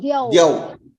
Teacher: Au. In that au, you hear a oo sound.